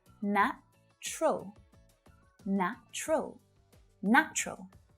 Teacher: native speakers usually reduce the pronunciation of this word down to just two syllables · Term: silent syllables